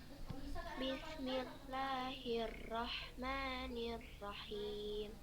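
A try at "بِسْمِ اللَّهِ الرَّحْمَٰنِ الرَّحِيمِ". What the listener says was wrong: Huruf H besarnya itu, Kak, yang di lafaz Allah sudah dengarnya kayak H kecil. Bismillahi, bukan hey. Beda nggak H yang di lafaz Allah sama yang di Ar-Rahim? Beda nggak? Beda ya. Itu kita lihat di Ar-Rahim.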